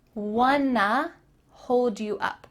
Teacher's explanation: Want to is linked together and makes wanna.